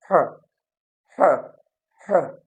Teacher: अब जब हवा यहाँ से निकलती है, ये जो आप गले से आप बोलते हैं ह, ह, ह, तो ये क्या होता है, आपका ग्लोटल साउंड होता है